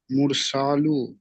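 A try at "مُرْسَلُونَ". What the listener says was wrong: লামা ও পেশ লু, টান হবে না?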